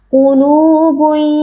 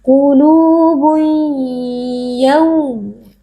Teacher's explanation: Nah, ketika tanwin atau nun sukun bertemu dengan huruf ya, nun sukun atau tanwinnya kita idghamkan atau kita leburkan, kita masukkan ke dalam huruf ya, disertai dengan adanya dengung yang dipanjangkan. Qulubun, harus ada dengung ke dalam khaysyum atau ke dalam rongga hidung, kemudian dengungnya kita perlama atau kita panjangkan sedikit